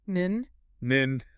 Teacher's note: the tip of the tongue touching the upper gums behind your teeth. Nin?